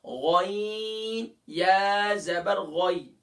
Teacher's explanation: اور غین top of the throat سے ادا ہوگا، یعنی کہ ادنی حلق سے ادا ہوگا